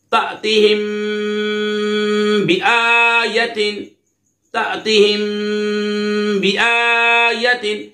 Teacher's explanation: میم ساکن کے بعد با ہے تو یہاں پر اخفاء شفوی ہوگا یعنی غنہ کر کے پڑھیں گے